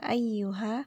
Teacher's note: ya-nya di sini dibaca panjang 4 sampai 5 harokat